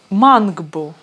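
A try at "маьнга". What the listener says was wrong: Да, только здесь вот это вот слово, вот это «а» с мягким знаком, оно читается как «а» с мягким знаком, как в английском слове, например, «cat», вот это «э». Мэнгбу, да, мэнгбу.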